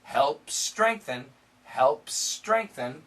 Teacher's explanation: We can connect the S's